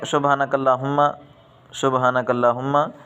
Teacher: ہا جو ہے یہ جو گلے سے نکالی جاتی ہے